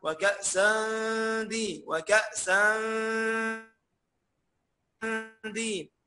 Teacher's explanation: عشان التنوين وراه حرف الدال، وده اسمه إخفاء حقيقي